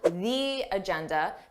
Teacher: Notice how I have that long E sound, the agenda, because agenda starts with a vowel.